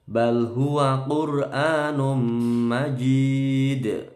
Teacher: roknya tebal, a-nya panjang dua ketukan, num, bacaan idgham bi gunnah, dengung lama.